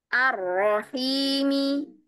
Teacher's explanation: Rya di sini meskipun dia bertasdid ya tapinya takrirnya itu ya takrirnya itu sempit jadi lidahnya enggak menggulung